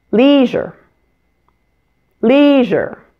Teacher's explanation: Since the R sound is in the word ending here, it has weak stress. so make sure to pronounce it more quickly and quietly than the first syllable.